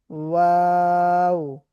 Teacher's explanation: দুই ঠোট গোল হয় সামান্য ফাঁকা থাকে সেই ফাঁকা জায়গা থেকে দুই ঠোটের মাঝখান থেকে ওয়াও উচ্চারিত হয়।